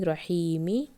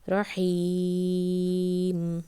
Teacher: when you are reading it continuously you just give two counts but when you are stopping the Mad letter then you will extend it for three to five count